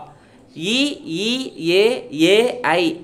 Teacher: வாய் திறக்கும் முயற்சியுடன் நாக்கினுடைய அடி ஓரமானது மேல்வாய்ப்பல்லை பொருந்தும் முயற்சியால் பிறக்கின்றன